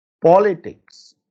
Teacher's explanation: You can see the po is stressed.